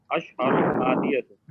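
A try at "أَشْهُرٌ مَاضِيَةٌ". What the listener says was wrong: नहीं, अशहरुन नहीं है, ये भी देखें एराब के ना गलती है, अशहुरुन, अशहुरुन, अशहुरुन, और उसके बाद क्या है? मादियतुन, अशहुरुन मादियतुन, ये होगा।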